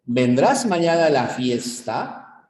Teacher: cuenta que justamente hay una curva melódica hay una entonación y en este tipo de preguntas o este tipo de oraciones la curva melódica sube es ascendente